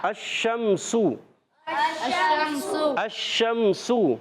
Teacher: شین کا مخرج ہے زبان کا درمیانی حصہ، تالو کا درمیانی حصہ